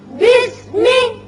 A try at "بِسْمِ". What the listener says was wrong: یہ بھی اسم نہیں ہے بلکہ با کی زیر سین سے ملے گا، الف خالی ہے. بسمی.